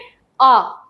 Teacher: आ जो स्वर है उसी में ये मुंह जो है वो पूरा खुला होता है। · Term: विवृत